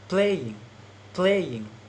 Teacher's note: play stress, ing unstressed because ing is suffixes